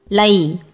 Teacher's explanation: your tip of your tongue touches the starting roof of mouth right above your teeth.